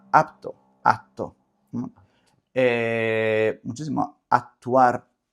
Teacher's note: tú dices como una T larga